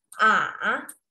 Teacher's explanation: Ketiga nadanya berbentuk V ya jadi dia ke bawah Turun kemudian naik lagi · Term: nada yang ketiga